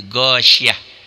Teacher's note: Ta marbutah itu apabila dihentikan bunyinya berubah menjadi ha